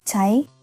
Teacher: Slow t natural speed. >> T rising tone like a question that demands an answer